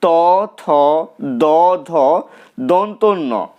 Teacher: ত বর্গের অন্তর্গত বর্ণগুলো উচ্চারিত হয় দাঁত থেকে অর্থাৎ এই বর্ণগুলো উচ্চারণ করার সময় জীব দাঁতকে স্পর্শ করে তাই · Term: দন্তধ্বনি